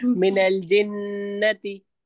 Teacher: اس میں نون کو ہمیں کھینچنا نہیں ہے کیونکہ نون پر زبر لگا ہے